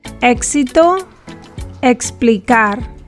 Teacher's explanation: the X is pronounced like the English KS sound, but softer or less explosive.